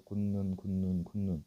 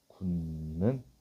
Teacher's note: 그럼 결론은 디귿이 니은으로 바뀐 거잖아.